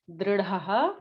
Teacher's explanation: it is the r, the vowel r. It's not the ra.